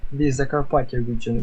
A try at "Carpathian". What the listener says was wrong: The Carpathia, because you're pronouncing it in Ukrainian, right? And in English it's Carpathian. Yeah, so the Carpathian region, Carpathian Mountains.